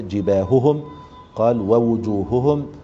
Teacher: ثم قال بين بلا ثقل تزيد به على التبيان، يعني بين الهاء ولكن احذر من تشديدها، يعني في مثل جباههم فاحرص على تبيين الهاء ولكن من غير ثقل، يعني من غير تشديد تزيد به على التبيان، يعني بينها وأظهرها ولكن في نفس الوقت لا تبالغ في إظهارها بالحد الذي يعني تتسبب فيه في التثقيل أو التشديد.